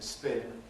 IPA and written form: spɪn (spin)